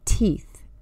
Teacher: The letter T is unvoiced. Your tongue is behind your front teeth and you force the air out.